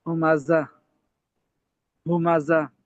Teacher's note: اس میں یہ زا میں سٹی کی آواز ہے